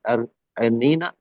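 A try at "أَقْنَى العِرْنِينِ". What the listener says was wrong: हाँ, इरनैनी, इरनैनी। आइन को कसरा के साथ पढ़ेंगे।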